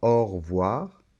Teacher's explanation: à la prononciation c'est que la lettre e de re voir cette lettre e quand on parle un peu comme ça rapidement au revoir on ne l'entend pas